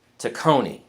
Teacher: I have to put the accent on the second syllable